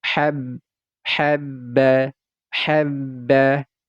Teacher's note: ini huruf ba ada tanda tasydidnya dia diseret terlebih dahulu hab habba habba lalu berharakat fathah tanwin bunyinya seharusnya kan ban